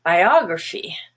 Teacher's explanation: biography has the stress on ah and the rest is schwa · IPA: /ə/